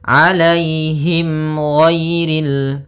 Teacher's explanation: mim mati bertemu dengan huruf ghain, maka dinamakan dengan idhar syafawi. Maka harus jelas suara mimnya.